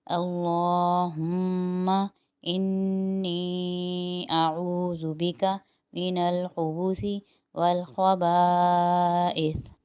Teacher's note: یہاں خبائث میں ایک تو الف مدہ بن رہا ہے تو ایک الف کی وہ مقدار، اور چھوٹا مد ہے تو 3 الف کی وہ مقدار، اس طرح ٹوٹل 4 الف کی مقدار ہو گئی